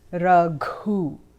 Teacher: There is a little aspiration after the G sound